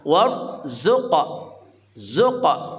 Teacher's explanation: Warzuqa qalqalah sughra. War ra-nya tafkhim tebal, ra mati sebelumnya fathah